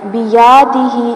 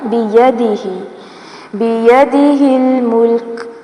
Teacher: یا زبر یا کو لمبا نہیں کرنا